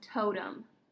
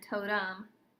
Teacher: The O makes long O, but the E at the end, totem, is schwa.